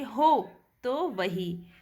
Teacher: हो को उच्चारण करने में ज़्यादा समय लग रहा है और तो को उच्चारण करने में कम समय लग रहा है